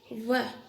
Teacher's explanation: दंतोष्टम, ऐसे वर्ण जिसका उच्चारण करने में दांत और ओष्ठ कार्य कर रहे हों, वकार से। वह, इनमें हमारी जो मुंह की हवा है वो दांतों से के साथ स्पर्श करते हुए, संघर्ष करते हुए निकल रही है और ओष्ठ का भी सहयोग हो रहा है, तो वकार से वह के साथ इनको वह को दंतोष्टम कहा गया है।